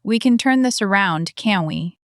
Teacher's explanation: Voice slightly rising, she's genuinely looking for reassurance.